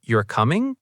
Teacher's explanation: if I say you're coming with rising intonation, now it sounds like a question.